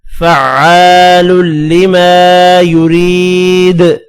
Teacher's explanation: دال بھی حروف قلقلہ ہے، وف کی صورت میں ساکن ہوگا، ساکن ہو تو قلقلہ بھی کریں گے دال پر